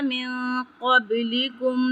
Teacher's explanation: من یہاں پہ نون ساکن ہے اور اس کے بعد قاف آ رہا ہے تو یہاں پہ ہم اخفا کریں گے۔